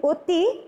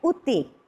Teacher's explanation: উয়ের উচ্চারণ করতে গিয়ে ঠোঁট দুটো একটু বেশি গোল হয়েছে এই স্বরে অয়ের চাইতে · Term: সংবৃত উচ্চারণ